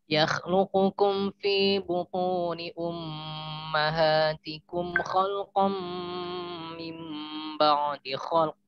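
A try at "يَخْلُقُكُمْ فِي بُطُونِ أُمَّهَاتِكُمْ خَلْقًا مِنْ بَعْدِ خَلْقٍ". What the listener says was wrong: Masya Allah. Mumtaz. Ahsanta.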